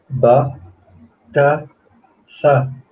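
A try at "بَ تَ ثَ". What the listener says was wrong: Ahsant.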